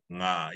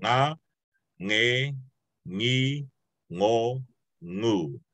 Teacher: You're putting the very back of your tongue up against the top of your throat, kind of like the glottal stop, the ah.